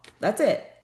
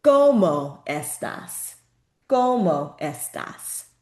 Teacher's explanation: So the O is it's shorter and it's not drawn out. Okay, so O, that's it.